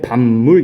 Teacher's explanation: 이 비읍 뒤에 나와 있는 미음의 영향으로 파열음인 비읍이 같은 조음 위치에 있는 비음인 미음으로 바뀌는 그런 현상이 일어납니다. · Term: 비음화